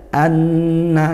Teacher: nun bertasydid dibaca dengung, gunnah ya